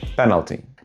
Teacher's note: that middle vowel is just a little too present.